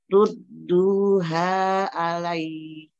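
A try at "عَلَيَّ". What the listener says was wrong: Kalau ya tasydid alai ya jangan alai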